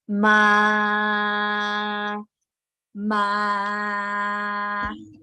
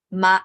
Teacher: middle and low this is about Pitch okay and one tone the first tone is flat tone flat tone go like this straight my my that is the first tone don't have to remember